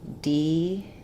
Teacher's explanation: We have a question about the word decal. So in the US, we say this with first syllable stress, decal, and then the second syllable, the letter A says the A sound.